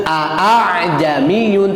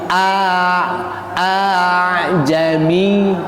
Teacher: dibaca antara bunyi hamzah dan alif. Jadi dibacana teu a'ami tapi a a jami gitu nya. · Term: tasil